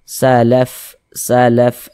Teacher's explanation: huruf fa salah satu huruf yang memiliki sifat hammas